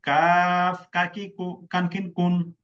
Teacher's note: জিহ্বার গোড়া তার বরাবর উপরের তালুর সঙ্গে লাগাইয়া ফানফিন কুন। জিহ্বার গোড়া থেকে একটু আগে বাড়াইয়া তার বরাবর উপরে তালুর সঙ্গে লাগাইয়া পাতি কাকের মতো পাতলা আওয়াজে